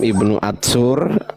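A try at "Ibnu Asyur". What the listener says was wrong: Sin, pakai sin Bang, pakai sin.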